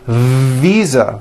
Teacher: i should have said visa with a voiced v